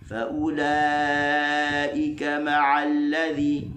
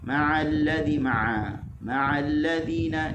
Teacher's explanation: ma'a kita buka, barulah dia tidak naik hidung. Kalau tak dia akan jadi ma'alladzi, ma'alladzina, dia akan naik hidung lah.